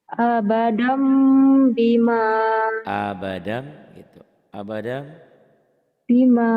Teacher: Ada mim mati, ini namanya iklab ya. Bunyi n-nya berubah jadi m. Mim gitu. Ada bibirnya mingkem rapat tapi ke hidung.